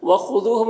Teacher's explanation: منہ میں واو مدہ ہے، ایک الف کے برابر کھینچے گا، میم میں اظہار شفوی ہو رہا ہے، اسے جلد پڑھنا ہے۔ وخذوہم، خا حرف مستعلیہ میں سے پر پڑھیں گے، دال کو باریک پڑھیں گے، یہاں پر واو مدہ ہے، ایک الف کے برابر کھینچیں گے، میم میں اظہار شفوی ہو رہا ہے، اسے جلد پڑھنا ہے۔